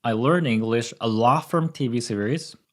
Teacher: I'm trying to stress “a lot” because that's the important part of this sentence